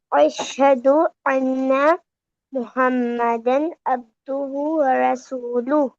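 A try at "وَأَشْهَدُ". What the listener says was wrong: ठीक है, और ये वाव भी मिस हो गया आपसे, व अशहदु, व अशहदु।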